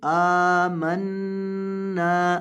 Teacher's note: حمزہ کو لمبا کریں گے، اس کے اوپر کھڑی زبر ہے، اور نون کو بھی لمبا کریں گے کیونکہ اس کے بعد الف مدہ ہے، اور نون کے اوپر